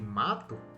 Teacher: a vogal A aqui de mato, ela é aberta, é oral.